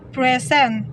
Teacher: a noun meaning give the stress in the first lallabel present in the word present as a verb meaning to show or give the stress is the second syllable